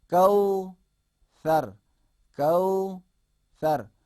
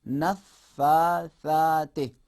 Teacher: سے میں ہم نے زبان اندر نہیں رکھا بلکہ زبان کو باہر لایا